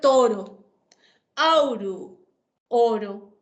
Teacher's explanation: el diptongo Au cambió a o